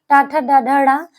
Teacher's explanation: टा ठ ड ढ मूर्धा से बोला जाता है